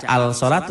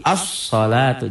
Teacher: Alif lamnya lamnya enggak dibaca jangan dibaca alalatu tapi asalatu nyamber dikatakan Alif lamnya ada tapi